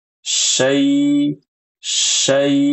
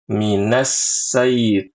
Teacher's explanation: Jangan diubah huruf syinnya menjadi sin.